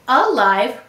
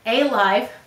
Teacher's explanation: we say alive rather than a live because this is an unstressed syllable so it is a schwa sound